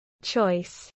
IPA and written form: tʃɔɪs (choice)